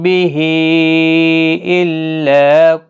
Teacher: یہاں پر مد منفصل ہے، 3 الف کے برابر کھینچ کر پڑھیں